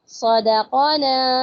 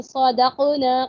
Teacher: ہم نے غلطی سے کیا پڑھ دیا صدقنا، قوف پہ ہم نے جزم لگا کے قلقلہ کر دیا، حرکت کو ختم کر دیا